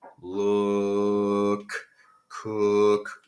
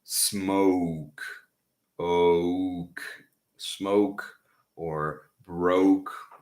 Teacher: If your finger can follow the sound of the vowel, look, cook, without changing, it is flat. And then the other ones are round